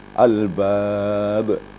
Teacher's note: huruf qalqala itu berada di akhir maka namanya qalqala kubra besar bukan berarti ditahan suara kita tetapi dijelaskan · Tapi jangan boleh ditahan albab, bukan gitu ya. Kalau tertahan berarti ada tasydid, sedangkan tasydidnya tidak ada.